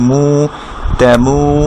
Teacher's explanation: এরপর আমরা এখানে দেখি তার সাথে আ যোগ করা, মিমের সাথে উ যোগ করা মু, তেমু, কিন্তু মুর বামে ওয়াও সাকিন থাকার কারণে এই মুটাকে এক আলিফ মাদ করতে হবে